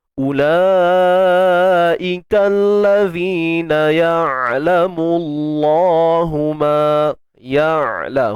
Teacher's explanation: Kita keluarkan sikit ujung lidah pada zal ni.